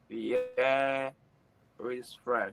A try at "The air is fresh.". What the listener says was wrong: Good. Now take away that gap in the middle. The air is fresh.